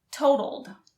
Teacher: notice the second t sounds more like a d